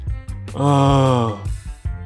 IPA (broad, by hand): ə